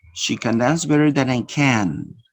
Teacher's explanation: The first can is pronounced with a schwa, weak. Can. And the second is pronounced full. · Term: weak form